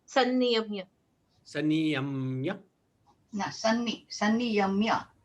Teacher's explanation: it is a double N there. So we need to slightly stress upon the N in sanniyamya.